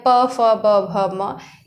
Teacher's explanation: प बोलने के लिए दोनों ओष्ठ का सहारा लेना पड़ता है